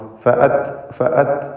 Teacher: അതിൻ്റെ ഹംസ് ഉച്ചാരണത്തിൽ ഉണ്ടാവാൻ ശ്രദ്ധിക്കണം. ഫഅത്, ഫഅത് എന്ന ആ ഉച്ചാരണത്തിലുള്ള ശ്വാസചലനമാണ് ഹംസ് എന്നതുകൊണ്ട് ഉദ്ദേശിക്കുന്നത്.